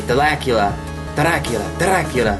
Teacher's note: saying Dracula but kind of with a rolled flap